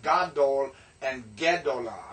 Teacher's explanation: the vowel reduces with the change in the masculine to the feminine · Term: vowel is reduced